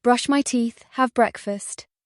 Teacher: The my becomes very short.